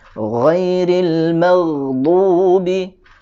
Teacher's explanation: Jadi yang perlu ditekankan adalah alirannya, ya. Ghain ini memiliki sifat rakhawah, ya. Jadi mengalirkan suara.